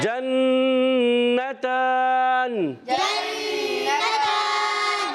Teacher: تا پر کھڑا زبر ایک الف کھینچ کر ادا کریں گے. وقف کرنے میں نون کو ساکن کر دیں گے، ہو جائے گا وقف بالاسکان